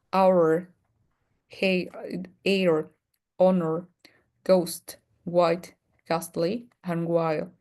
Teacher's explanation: In these particular words, we don't pronounce the H.